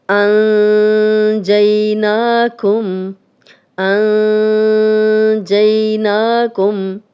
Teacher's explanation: نون ساکن آگے جیم آ گیا تو اخفا ہے، اور جو غنہ کر رہے ہیں یہ اخفا والا غنہ ہے